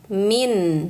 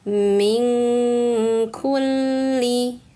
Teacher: Maka cara bacanya nunnya disamarkan. Jangan disentuh makharijul huruf nunnya. Kalau disentuh min. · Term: ikhfa